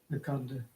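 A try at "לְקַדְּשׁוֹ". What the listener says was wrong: Under the Dalet, there should be a Shva there. Kad Sho. Yeah, there should be a Shva under that Dalet. Lekad Sho.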